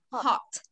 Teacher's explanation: Giờ chỉ xả ra một tí hơi thôi, đừng có đóng hơi là được. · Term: âm hát